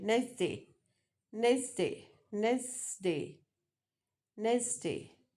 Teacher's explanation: So here T is deleted.